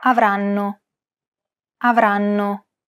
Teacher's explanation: every syllable is pronounced for roughly an equal amount of time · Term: syllable-timed language